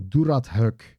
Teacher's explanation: there is no vowel in there or at least it's not written, but there is a clear vowel between the th and the kh sound. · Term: schwa sounds